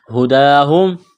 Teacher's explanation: ہا پیش ہوں چشمے والی گول ہا ہے، منہ سے ہوا نکالنے کی طرح پڑھیں گے